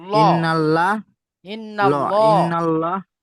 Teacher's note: আল্লাহ শব্দের লামের আগে জবার এসেছে তাই আল্লাহ শব্দের লামকে পুর করে পড়তে হবে